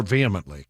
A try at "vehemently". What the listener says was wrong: you don't pronounce the h vehemently